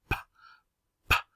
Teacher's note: p has the place of articulation in the lips. So it's called bilabial consonant.